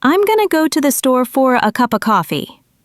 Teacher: The words to, for, and of are reduced to simple, unstressed sounds. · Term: reductions